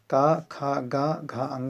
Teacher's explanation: ये सभी जो हैं कंठ जो है, इनका स्थान जो है कंठ है या कंठ से होता है